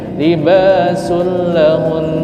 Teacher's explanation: ini hukumnya kada berdengung. Kalau kada berdengung artinya kada panjang